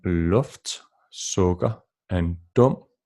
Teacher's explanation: The vowel sound U lowers down to O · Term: short U sound